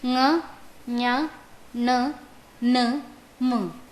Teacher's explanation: एते वर्णाः अपि मुखेन सह नासिकया उच्चार्यन्ते। अतः एते वर्णाः नासिक्याः इति कथ्यन्ते।